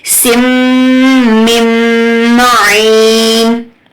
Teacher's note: میم مشدد کے اوپر غنہ ہوگا. سم میم نون کو ڈراپ کریں گے، میم کو پھر میم سے ہی ملائیں گے.